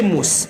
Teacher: mim baris depan mu, sin sukun ada sifat sofir